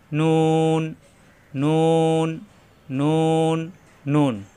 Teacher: সবাই লক্ষ্য রাখবেন, নুন জিহ্বার আগা উপরে তালুতে লাগবে